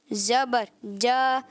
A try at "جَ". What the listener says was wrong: جیم زبر جا, لمبا نہیں. جیم زبر جا, حرکت کو لمبا نہیں کرنا.